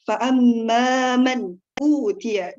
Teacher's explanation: Di situ terdapat gunnah fa'amman. Gunnah itu ditahan, yang ditahannya sebanyak 2 harokat.